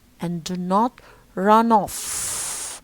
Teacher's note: off here, okay, is not weak, because it's a phrasal verb here, run off, and we stress the particle here, which is off, so it's strong